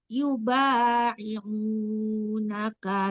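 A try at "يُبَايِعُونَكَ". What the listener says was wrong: Yubayi'u ya, jelaskan ya-nya. Coba ulang dari yubayi, jangan ya ya, jelaskan ya kasrahnya ya Bu. Yubayi.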